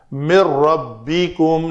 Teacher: نون ساکن کے بعد را آیا ہے تو ادغام کامل ہوا ہے، نون کو ہم نے نہیں پڑھا